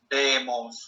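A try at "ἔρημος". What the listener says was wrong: Bravo, eremos. Bien,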